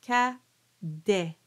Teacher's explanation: The a cadet is very open. It's an anterior a. All your a's are going to be like that.